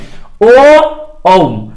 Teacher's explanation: कंठ से आवाज निकला, ओष्ठ की मदद से क्लियर हुआ, इसीलिए इसे कंठ ओष्ठ वर्ण कहते हैं।